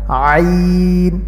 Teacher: আইনের উচ্চারণ গলার মধ্যখান থেকে, অর্থাৎ হলকের মধ্যখান হইতে উচ্চারণ করতে হয়।